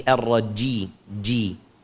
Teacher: Kalau ji itu berarti ada satu sifat jatuh. Jim itu bersifat syiddah. Syiddah itu suaranya nggak boleh mengalir.